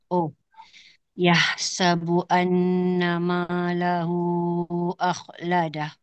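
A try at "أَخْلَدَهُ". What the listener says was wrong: Okey, huruf kha tak berapa ditarik. Okey, akhladah. Okey, jadi puan tarik lagi. Akhladah. Akhladah. Dia bunyi macam seolah-olah santai je.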